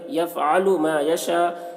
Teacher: یفعل ما یشاء یہاں پر مد متصل ہے، حرف مد کے بعد حمزہ اسی کلمہ میں ہے، مد متصل کو 3-4 الف کے برابر کھینچ کر پڑھیں گے